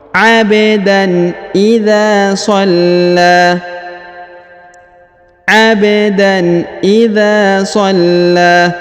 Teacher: huruf la yang di sini berharokat tasdid, maka kita tahan dan ditekan, lalu dipanjangkan 2 harokat karena di atasnya terdapat alif kecil dan juga di depannya terdapat alif bengkok atau alif maksurah.